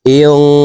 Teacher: নুন সাকিনের পরে ইকফার 15টি হরফের ভিতরে একটি হরফ সিন আসছে, এই কারণে এই নুন সাকিনকে নাকের ভিতরে লুকাইয়া গুন্নার সহিত পড়ব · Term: ইকফা গুন্নাহ